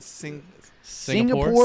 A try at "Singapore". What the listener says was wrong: Singa. There's no L. Singapore.